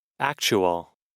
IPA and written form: ˈæk.tʃu.əl (actual)